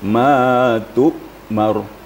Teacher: Tu'mar, tapi tu'mar. Dia hamzah itu sifatnya adalah syiddah. Terputus. Jadi ma tu'mar.